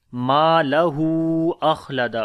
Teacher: میم کو لمبا کریں گے، الف مدہ ہے، ہو کو بھی لمبا کریں گے